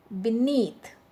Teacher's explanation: be is a weak prefix so that's why the stress is on the second syllable